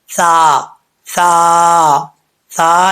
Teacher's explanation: سا جو ہے زبان کی نوک اوپر والے دانتوں کے نچلے حصے سے لگے گی تو سا پڑھا جائے گا بغیر سیٹی کے · سا جو ہے بغیر سیٹی کے پڑھا جاتا ہے، سیٹی کے ساتھ نہیں پڑھتے، ٹھیک ہے۔ تو آپ نے سا کو بغیر سیٹی کے پڑھنا ہے۔